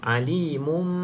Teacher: Nun dia dekat sini hukum nun mati tapi bila iklab ni nun mati tersebut kita tukarkan kepada bunyi mim tukar kepada bunyi mim dan ditambahkan dengan dengung dua harakat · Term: iqlab